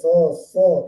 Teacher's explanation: Kemudian mengalir udaranya keluar, mengucapkan huruf so tidak tertahan di sini, jadi so gitu, ada seperti itu kan.